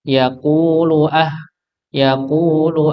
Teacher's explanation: Maka lamnya dibaca satu harakat saja.